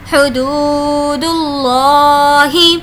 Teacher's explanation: دیکھیے یہاں پر بھی ہم لفظ اللہ کو موٹا پڑھ رہے ہیں، کیوں؟ اس لیے کہ اللہ سے پہلے پیش ہے، اور یہاں پر ہم اس لیے کھینچ رہے ہیں کہ یہاں پر ہو رہا ہے واو مدہ کا قاعدہ، واو جس پر جزم ہے اور اس سے پہلے پیش ہے تو اس کو ہم کھینچ کر پڑھیں گے۔